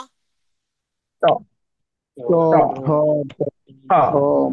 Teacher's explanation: এটা দাঁতের মাড়ি থেকে ট বর্গের 5টি বর্ণ, যেমন ট মানে জিহ্বাটা উপরে দাঁতের মাড়িতে লাগে, শক্ত গোষ্ঠে লাগে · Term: মূর্ধন্য বর্ণ